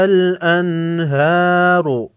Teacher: را پر پیش ہے، را کو موٹا پڑھیں گے